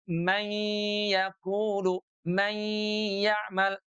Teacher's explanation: Nunnya yang semula ada di ujung lidah dengan langit-langit sekarang ditarik ke tengah lidah karena huruf ya-nya keluar dari tengah lidah. Mayya mayya tuh sambil ghunah ditahan dua ketuk keluar suaranya dari longga hidung.